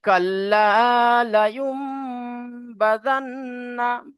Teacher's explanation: এখানে দেখেন নুন সাকিনের পরে বা এসেছে, নুন সাকিনের পরে বা এসেছে, তাহলে নুন সাকিনের আওয়াজকে মিমের দ্বারা পরিবর্তন করে একালি পরিমাণ গুণনা করে পড়তে হবে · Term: ইকলাব